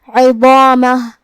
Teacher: ضا کی ادائیگی زبان کے سر اور اوپر والے دانتوں کے اندرونی کناروں سے ہے. ضا حروف التفخیم میں سے بھی ہے تو ہم یہ حرف کو بھاری آواز میں ادا کریں گے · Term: حرف الضا